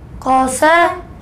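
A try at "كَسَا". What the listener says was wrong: قوسا نہیں، کیسا، کاف کو موٹا نہیں کرتے، کیسا۔ کاف زبر،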